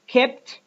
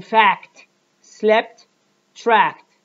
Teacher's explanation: in these words the explosion of the first stop consonant is missing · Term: missing explosion